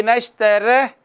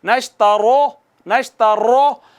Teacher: را پر زبر یا پیش ہوگی تو اس کو پر کر کے موٹا کر کے پڑھیں گے